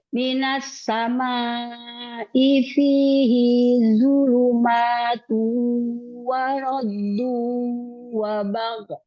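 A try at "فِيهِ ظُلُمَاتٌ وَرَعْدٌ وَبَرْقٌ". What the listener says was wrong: Fihi zuluma. Hinya nggak ada mat. Fihi zulumatu waradu. Ainnya jangan lupa mengalir. Tuh kan dia punya tawasud bainiyah. Fihi zuluma. Dia nggak ada mat. Fihi-nya nggak ada mat. Jadi langsung fihi zuluma. Wabar. Wabar kan ada roknya. Wabar baru qofnya karena wakof dia kan ada sifat qalqalah ya. Wabar.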